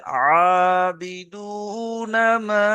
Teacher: মাটা কয় আলি পরিমাণ টান হবে? 2 থেকে 3 আলি পরিমাণ টান দিয়ে পড়তে হবে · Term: মাদ্দে মুনফাসিল